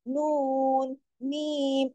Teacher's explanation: नून और मीम दोनों हुरूफ ऐसे हुरूफ है कि इनके बोलने में इनके पढ़ने में आवाज ऑलरेडी नाक में जाती है। अगर नाक में आवाज नहीं जाएगी तो ये तो अदा ही नहीं होंगे।